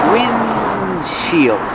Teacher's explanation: you don't really hear the D because it's a stop D